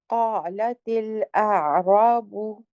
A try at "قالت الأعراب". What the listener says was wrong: قالت الأعراب. Yes, the only thing I'd like you to do on is when you say qa, you kind of stop after it. You say qa, latil, qa, latil, qala, qala. Qalat.